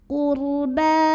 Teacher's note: Huruf ra dibunyikan secara tafkhim karena didahului baris dhammah ra sukunnya ya. Maka bacanya ditebalkan. Qurba. Ba mad tabi'i muqaddar karena ada baris fathah tegak di atas huruf ba.